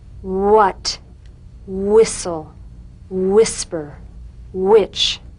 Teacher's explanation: words that begin with wh are pronounced h w